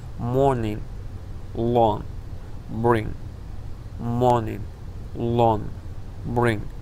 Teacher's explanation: дар ин ҳолат ҳарфи g талаффуз намешавад ва ҳарфи n каме бо димоғ талаффуз карда мешавад